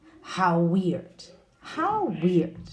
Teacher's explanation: the w sound is shared, no? With how and weird